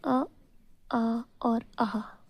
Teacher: तो देखें जो पहले के दो होते हैं और एक लास्ट का अः होता है। इनकी उत्पत्ति कंठ से ही होती है।